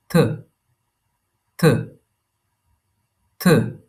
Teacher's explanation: Here's Th, a soft Th. Tongue on your teeth with a puff of air.